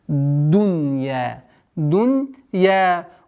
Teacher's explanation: При переходе с огласовки фатха на даль давим на местонахождение звука даль, чтобы не переходило в та. Хаятад дунья, чтобы не было т.